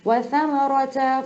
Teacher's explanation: سا کے لیے بہت آسان ہے, زبان باہر نکال لیا کریں, آپ کو سا اور سین میں فرق سمجھ میں آ جائے گا. سین زبان اندر رہتی ہے, سا زبان باہر آ جاتی ہے.